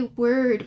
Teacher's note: when we say word we jump straight from the w to the r it's almost like there is no o like if you spelled word without the or pronounced word without